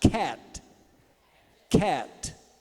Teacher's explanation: Você pode até explodir o T Cat mas não chega a virar um I